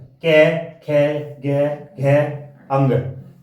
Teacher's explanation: कंठ कौन सा होता है, गला, ये गले से बोलते हैं हमेशा